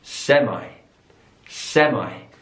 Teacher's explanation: so the stress is on the last syllable there